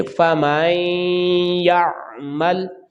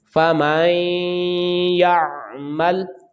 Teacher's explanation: جب ہم غنہ کریں گے ناک میں آواز جائے گی تو ایک الف کے برابر لمبائی ہوگی